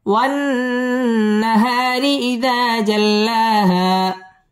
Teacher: টেনে পড়তে হবে। জাল্লা মদ্দে তাবাঈ এক আলিফ টেনে পড়তে হবে। হা মদ্দে তাবাঈ এক আলিফ টান দিয়ে ওয়াকফ করতে হবে।